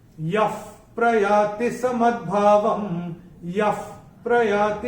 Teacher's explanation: पहले चरण में चैंटिंग के हिसाब से कोई नियम है नहीं, दूसरे चरण में भी चैंटिंग के हिसाब से कोई नियम है नहीं, तीसरे चरण में य के बाद जो विसर्ग आ रहा है उसके बाद का अक्षर है प, और विसर्ग के बाद जब प या फ आता है तो विसर्ग का उच्चारण होगा फ। जैसे फूंक मारते ना फ, वैसे उसका उच्चारण होगा।